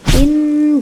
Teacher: in itu guna, nun bertasydid ya, dengungkan 2-3 harokat. In gitu.